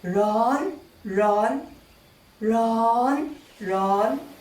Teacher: there is no need to change the tone instead you drag the high tone slightly longer so to emphasize that it is so hot you say run